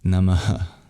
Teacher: that H at the end stands for an expulsion of breath, of visarga. So it's like the breath that you're still holding on to at the end of the mantra, you release.